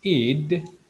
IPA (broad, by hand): ɪd